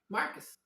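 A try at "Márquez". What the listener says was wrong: In English, for some reason they changed the stress, so it's Marquez. So, but in Spanish it's Marquez.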